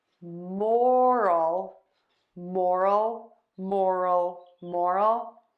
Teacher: to say moral which means standards of behavior we are going to stress syllable number one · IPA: /ˈmɔrəl/